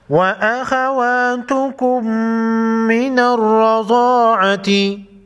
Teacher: را اور ضاد کو موٹا پڑھیں گے